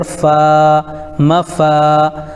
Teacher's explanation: الف سے پہلے فا کے اوپر زبر ہے اس لیے الف مدہ ہوگا، ان کو تھوڑا کھینچ کر پڑھیں